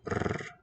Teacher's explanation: It's a voiceless trill.